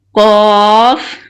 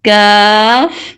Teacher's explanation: ایک چیز نوٹ کر لیجیے، قاف اور کاف کے درمیان فرق واضح ہونا چاہیے۔ قاف قدر مضبوطی اور گہرائی سے ادا ہوتا ہے جبکہ کاف نسبتاً نرمی سے ادا کیا جاتا ہے۔